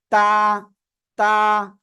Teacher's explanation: উচ্চারণ হচ্ছে জিহ্বার আগার সামনের উপরের দুই দাঁতের গোড়ার সঙ্গে লাগিয়ে